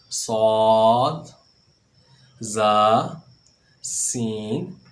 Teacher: زبان کی نوک جب اوپر اور نیچے کے اگلے دونوں دانتوں کے درمیان آ جائے تو صاد اور زا اور سین ادا ہوتے ہیں